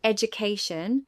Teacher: In the word education, the stress pattern is that the third syllable has primary stress